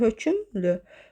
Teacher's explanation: Hökümlü yazılır, amma tələffüz zamanı bir dənə ü saytı artırılır.